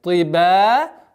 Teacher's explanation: Самаватин тиба. Здесь после твердого звука ты ба мягкая